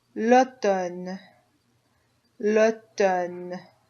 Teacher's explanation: you don't hear that M in there at all